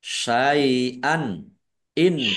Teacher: Fathah tanwin bertemu dengan huruf alif. Bacaan izhar ya. Izhar khalqi dibaca jelas.